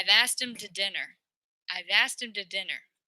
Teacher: this H is like almost deleted